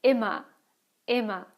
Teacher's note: here you have the ER at the end of the word. It sounds more like an A than an actual R